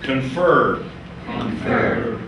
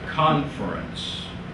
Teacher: Stress on the second syllable, please.